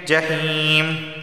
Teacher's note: یا ساکن سے پہلے زیر آیا ہے تو اسے ایک الف کے برابر کھینچ کر پڑھنا ہوگا